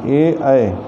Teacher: इनके उच्चारण में कंठ और ताल दोनों सहायक होते हैं। ए ऐ कंठ ताल, ए दैतोह कंठ तालु, ए ऐ, इनके उच्चारण स्थान में कंठ और ताल दोनों सहायक हैं।